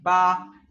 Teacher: Cuando pronuncio la B, hago un sonido de P sin expulsar aire.